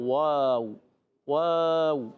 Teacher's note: واو دونوں ہونٹوں کی گولائی سے ادا ہوتا ہے